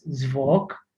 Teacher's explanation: when the g is at the end of the word, such as zvok, it is pronounced with a k